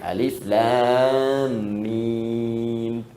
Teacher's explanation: Alif harful hawa, lam ke lisan, mim di bibir.